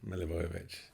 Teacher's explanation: there's not an up and down in it it's all the same